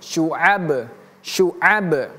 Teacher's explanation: Jadi bacanya huruf ba itu memiliki qalqalah memantul